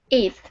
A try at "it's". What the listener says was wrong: Okay, so you're putting the S before the T. Okay, this is what you're saying.